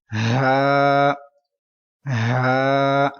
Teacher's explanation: this letter is pronounced with deep voice from bottom part of your throat